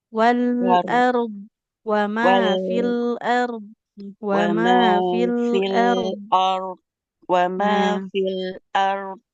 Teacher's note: Huruf ro itu ada getarnya tapi memang sedikit ya. Enggak boleh sampai hilang total dilatih lagi.